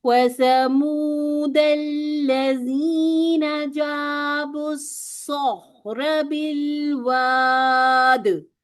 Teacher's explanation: वाव पे राउंडिंग करेंगे, 2 काउंट की मद भी बनेगी, दाल पर कलकला करेंगे वक्फ की सूरत में।